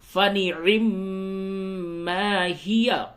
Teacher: میم مشدد ہے یہاں پہ غنہ ہوگا، فنعم ما ہی، اور اس جگہ پہ اگر آپ وقف کرتے ہیں تو ہوگا فنعم ما ہی یا ساکن ہو جائے گا۔